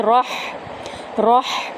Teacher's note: ہا کو وسط حلق سے ادا کریں گے, را کو ہا کے اندر ادا کریں گے.